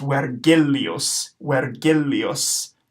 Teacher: Our R is going to be rolled. And then our G is not going to be a J sound like in Virgil, it's going to be a G sound because Latin G is always G, so this will be pronounced Vergilius, Vergilius.